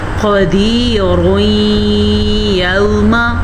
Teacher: اگر ہم یہاں پہ وقف نہیں کریں گے تو را کو پر پڑھیں گے، کیسے؟ قدیر یوم، اس کے ساتھ ساتھ ادغام بالغنہ کا قاعدہ بھی بن جائے گا۔